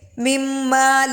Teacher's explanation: مم مال میں شد کی وجہ سے غنہ ہو رہا ہے